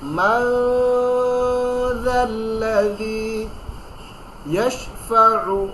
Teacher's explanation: ইকফা নাকের ভিতরে লুকিয়ে গুণা করে পড়তে হয়।